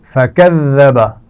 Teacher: ذال پر شد ہے تو اس کو ہم سختی تو کریں گے لیکن اس کی آواز میں سیٹی نہیں آنی چاہیے